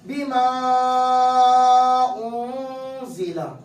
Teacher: اب پڑھا جائے گا بیما انزل, سمجھ آئی بات. ہاں, بیما کی آواز تھوڑی بڑی بڑھ جائے گی, ایک الف سے زیادہ چلی جائے گی, کیونکہ اس لیے کہ اس الف مدہ کے بعد حمزہ آیا ہوا ہے, ٹھیک ہے نا.